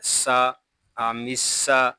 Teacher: سین یہ حروف صفیریہ میں سے ہے، اس میں سیٹی کی آواز آئے گی۔ سین زبر سا، آمسا، میم الف زبر ما، آمسا ما، یہاں مد متصل ہو رہا ہے.